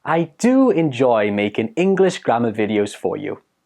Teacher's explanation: put the stress on the do when you're speaking